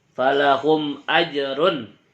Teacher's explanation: harus dibaca dengan jelas tidak boleh dengung tidak boleh dimasukkan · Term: izhar syafawi